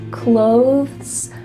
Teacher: You see how my tongue comes out a little bit for that TH? Clothes. But really, when we're speaking quickly, it just sounds like close.